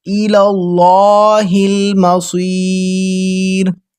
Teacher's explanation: لام کو پر موٹا کر کے پڑھیں گے کیونکہ اللہ کی لام سے پہلے والے حرف پر زبر ہے